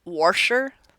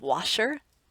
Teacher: Then there’s the intrusive “r” like “warsher” instead of “washer.”